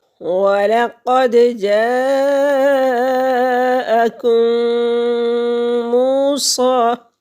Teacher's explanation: کم، کاف باریک پڑھیں گے یہ والا، اور میم ساکن ہے، اور میم ساکن کے بعد میم مشدد آ گیا تو یہاں پر ادغام شفوی ہوگا۔ میم میم میں مل جائے گی اور 2 حرکت کے برابر ناک میں آواز کو چھپائیں گے